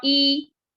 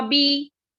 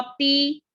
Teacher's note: اب کسرہ کی آواز ہمیشہ نیچے کو جاتی ہے. کسرہ کو معروف پڑھیں گے اور مجہول آواز سے بچا جائے گا